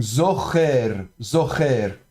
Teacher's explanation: Donc on va prononcer ça zor, hein, du fond de la gorge, enfin avec le tséré ici, donc zocher, zocher. · Donc zain vocalisé avec un point au-dessus comme ça, c'est le cholem, donc zo. Et puis vous avez le kaf, de nouveau fricatif. Pourquoi? Parce qu'il est précédé d'un élément vocalique, donc le cholem.